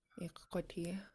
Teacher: if you have a W there, you purse your lips around the K